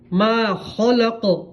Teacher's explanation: قاف کے اندر قلقلہ آواز لوٹ کے آئیں گے. جس طرح آپ دیوار کے اوپر بول کو پھینکیں گے تو واپس لوٹ کر آئے گا، اسی طرح قاف کی آواز بھی لوٹ کر آئیں گی.